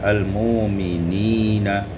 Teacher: Al-mu'minina ibdalul hamzati wawan, ditukar hamzah dengan waw, akan baca al-mu'minina.